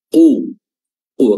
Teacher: bahas tadi pangkal lidah bertemu dengan langit-langit lunak tapi di sini harakatnya damah jadi ketebalannya makin terdengar qu qu kalau tadi qo di sini ya dibarangi dengan ee · nazzalallah ya wlna huruf q di sini Kita sudah bahas tadi pangkal lidah bertemu dengan langit-langit lunak tapi di sini harakatnya damah jadi ketebalannya makin terdengar